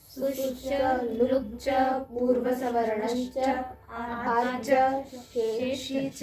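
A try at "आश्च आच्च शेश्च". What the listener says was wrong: नहीं, दो हैं यहाँ पर, आश्च और आच्च। उसके बाद शेष्च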